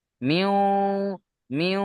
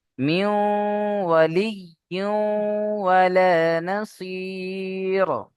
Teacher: নুন সাকিনের আওয়াজকে ওয়াও এর সাথে মিলিয়ে দিয়ে একালিফ গুন্না সহ পড়তে হবে।